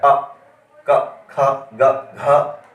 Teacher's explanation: ना तो जीभ का कोई भी अंग हिला है, जीभ का ना तो अग्रभाग, ना मध्य भाग, ना पश्च भाग, सीधे कंठ से आ रहा है